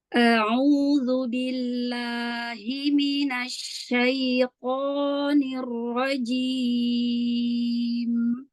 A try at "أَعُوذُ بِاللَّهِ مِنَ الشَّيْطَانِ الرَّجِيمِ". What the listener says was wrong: Masya Allah, roknya tebalkan lagi Mi sedikit. Allah.